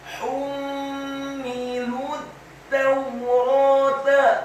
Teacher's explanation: Kata hummilut tawrata, huruf ha-nya dibaca tipis, tarqiq, nyaring dan halus, dhammah satu harokat. Kemudian huruf mimnya ditasydidkan dengan gunnah atau dengung · Huruf lamnya dibaca tipis, dhammah, cukup satu harokat saja karena setelahnya langsung disambung ke huruf ta yang tasydid dan fathah satu harokat.